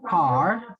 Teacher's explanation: when the british is not uh pronouncing the r sounds clearly and the american is pronouncing r sounds clearly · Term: clear r